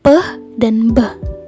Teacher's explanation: sehingga bunyinya meletup contoh dari bilabial positif adalah bunyi Pedan Mba bunyi pH dan Mbah dihasilkan karena terjadinya pertemuan antara bibir atas dan bibir bawah lalu bunyinya meletup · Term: bilabial plosif